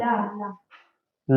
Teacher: और जो पार्श्विक ध्वनि होता है वह होता है ला